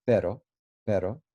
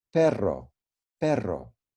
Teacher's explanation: the word but you know which is pero in spanish p-e-r-o then you just flap your r pero pero but if you're saying dog then it's perro perro